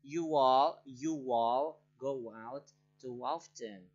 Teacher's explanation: Ketika kata pertama berakhir dengan sebuah o, u vowel sound, jadi atau o atau u, o sama u, our lips are round. Jadi bibir kita itu membentuk bulat gitu ya, bulat. Kemudian kita menyisipkan sebuah w sound pada awal kata berikutnya. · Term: lips round